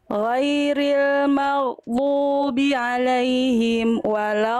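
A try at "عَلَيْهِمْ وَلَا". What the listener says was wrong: Nah, amnya jangan berhenti. Alaihim wala, amnya jangan berhenti. Am ke wawunya jangan berhenti, jangan ada jeda, jangan ada jeda nih.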